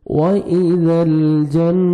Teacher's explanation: نون مشدد ہے, غنہ کریں گے, نوز میں ساؤنڈ لے کے جائیں گے. جنت تا کو باریک پڑھیں گے.